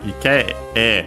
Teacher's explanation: low, high, and then low for the particles in this case